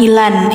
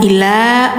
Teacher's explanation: jadi suara n-nya hilang-hilangin dulay yajidu Mau ila bacanya jangan ilan ila panjang dua harakat si n-nya dihilangkan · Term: mad iwad